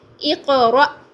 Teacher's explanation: اور حمزہ کو ہم جھٹکا دے کے پڑھیں گے